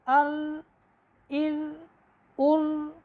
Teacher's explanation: ہلکا سا اس میں تکرار آئے گا